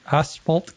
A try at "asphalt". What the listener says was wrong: S. There's no H.